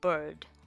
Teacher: you have the 'i' which is a vowel next to the 'r' sound so the vowel sound becomes non-existent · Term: R controlled vowel